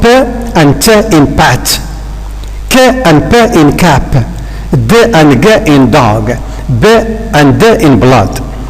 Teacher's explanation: In all the underlined consonants, we need to stop the air momentarily. · Stops are formed by a complete obstruction of air. The air is being stopped, obstructed completely by the speech organs. This is the case of p and t in pat, k and p in cap, d and g in dog, b and d in blood.